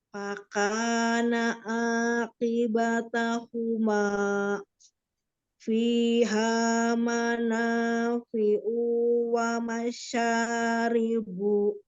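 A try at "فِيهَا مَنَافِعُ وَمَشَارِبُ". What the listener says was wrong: U-nya pendek.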